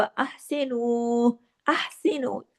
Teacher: हा को गले से पढ़ना है